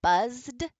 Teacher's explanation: buzz buzz is a voiced sound your voice is on then your Ed at the end for buzzed will be a d the voiced version of the T